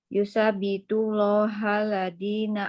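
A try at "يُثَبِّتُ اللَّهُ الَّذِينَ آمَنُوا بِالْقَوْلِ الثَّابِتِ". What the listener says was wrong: Ibu, yusabbitullahul, bukan hal.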